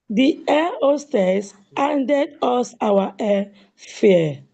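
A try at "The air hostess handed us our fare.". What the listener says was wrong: I still can't hear the sound of the H.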